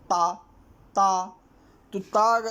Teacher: ता आपका दंत से निकलता है